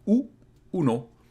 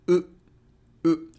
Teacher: It's not exactly like the Spanish U because it's not as closed, so it's a bit more open. U, uno, but in Japanese it's U, U. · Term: Japanese U